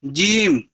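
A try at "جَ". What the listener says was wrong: শুধু জিম বললে হবে না। উপরে জাবার আছে না? জি। আচ্ছা, এইটা জিম যে বললেন আপনি, কিন্তু জিম যে হবে না, এটাকে বলতে হবে জিম জি। জিম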